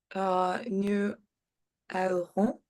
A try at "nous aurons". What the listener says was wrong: Et la liaison, nous aurons.